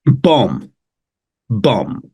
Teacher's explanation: specifically MB usually we don't say the b